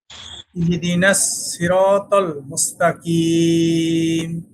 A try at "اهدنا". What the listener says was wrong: এই যে আপনার এখানে একটা জের হয়ে যাচ্ছে, ইহিদিনা হয়ে যাচ্ছে। ইহি বলা যাবে না, ইহদিনাস সিরাতাল মুস্তাকিম।